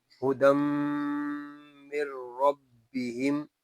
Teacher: ہدم من ربہم، اس میں دال کے اوپر دو زبر کی تنوین ہے اور آگے یا ساکن ہے۔ دو زبر کی تنوین کو ہم میم سے ملا کر پڑھیں گے اور یہاں پر جو قاعدہ لگے گا وہ ہے ادغام کا۔